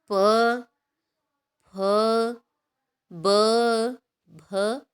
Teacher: जिन व्यंजनों के उच्चारण में दोनों होठों द्वारा श्वास का अवरोध होता है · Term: ओष्ठ व्यंजन